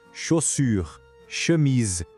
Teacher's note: O som do CH em francês não é o nosso ti de tchau. De jeito nenhum. É um som bem mais suave, um chi. Exatamente como o som do X na palavra xícara.